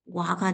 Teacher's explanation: 단모음인 오가 반모음인 오로 교체가 된 거죠? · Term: 반모음화